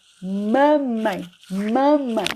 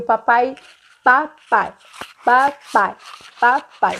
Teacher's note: a criança fala mamãe e papai primeiro porque são sons fáceis, bilabiais de falar